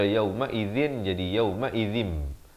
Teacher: Di sini tanwin bertemu mim, idgham bi gunnah, masuk beserta dengung